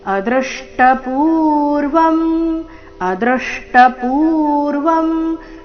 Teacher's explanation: ಅದೃಷ್ಟ ಪೂರ್ವಂ ಶಬ್ದದಲ್ಲಿ ದೃ ಮೇಲೆ ಆಘಾತ ಬರಬೇಕು ಅ ಮೇಲೆ ಆಘಾತ ಬರಬಾರದು